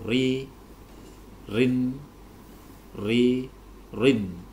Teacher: Jadi kalau kita nanti menemui ro berharokat kasroh dan ro berharokat kasrotain, maka ro harus dibaca tarqiq, dibaca tipis, yaitu ri, rin, ri, rin. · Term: ro tarqiq